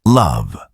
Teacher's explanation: A light L appears at the beginning of words like love.